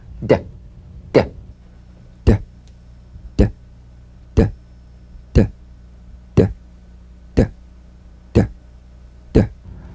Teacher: Voiced tongue front palatal stop consonant. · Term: D drum beat